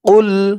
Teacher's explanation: কফের আওয়াজটা গলার ভেতর থেকে ধাক্কা খেয়ে বের হবে